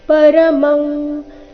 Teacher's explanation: ಪರಮಂ ಇಲ್ಲಿ ಕವರ್ಗದ ಅನುನಾಸಿಕ ಅನುಸ್ವಾರದ ಉಚ್ಚಾರಣೆ